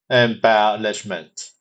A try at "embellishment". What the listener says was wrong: Okay, you're very close. Try emphasizing the second syllable a little more. Embellishment.